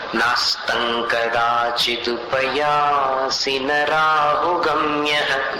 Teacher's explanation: नास्तं म मत बोलो, तंक आतंक वैसा उच्चारण। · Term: अनुस्वार